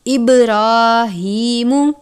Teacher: را کے اوپر کھڑی زبر ہے، را کو پر پڑھیں گے، کھڑی حرکات کی مقدار ایک الف کے برابر ہے۔